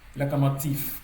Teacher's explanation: le V qui se situe en fin de mot va s'assourdir pour devenir F. Et le F, qui est une consonne sourde et qui est la paire de consonnes sourdes de la consonne sonore V.